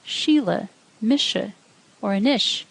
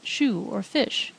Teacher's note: slender s sounds like sh